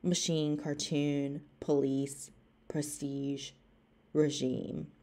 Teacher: french with the stress on the final syllable